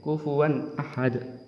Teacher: tidak boleh dengung, tidak boleh samar, harus jelas n-nya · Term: idhar